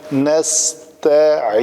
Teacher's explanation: تا کو پتلا رکھیں گے، اگر تا کو موٹا کر دیں گے تو یہ تو بن جائے گا